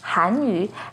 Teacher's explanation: has the second rising tone on han